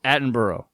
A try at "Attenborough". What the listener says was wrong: Oh, Attenborough. No, you're saying Boro. Attenborough.